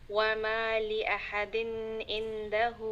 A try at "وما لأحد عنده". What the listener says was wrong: There's no غنة on din, so وما لأحد عنده.